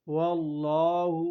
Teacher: واللہ لام مشدد ہے، اس کو موٹا کر کے پڑھا جاتا ہے